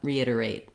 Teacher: at the end reiterate the T is probably going to be stopped. We don't necessarily need to release the air there. · you need to move smoothly in and out of that tight back American R. Make sure you use the tense long dip thong eight.